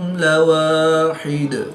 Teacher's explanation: دو پیش کی تنوین کو وقف کی حالت میں ساکن کر کے پڑھیں گے۔